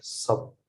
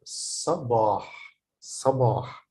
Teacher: Here you can notice the difference between here صباح here, because this is a short vowel, so I pronounce it like sab. But then I have a long vowel after the ba, which is alif, so I pronounce it صباح.